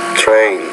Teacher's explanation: with the T we gotta put a little bit more aspiration